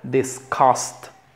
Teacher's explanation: Se acentúa cost. Y es una I cortita, disgust. Invited, invited.